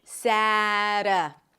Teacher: the T is a flap T, so it sounds like a D or like a very short R sound in some languages